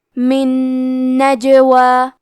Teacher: تو ہم نون ساکن کو دوسرے نون میں ملا کے ایک ہی نون غنہ اور تشدید کے ساتھ یہ حکم کو ادا کریں گے. من نجوا. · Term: ادغام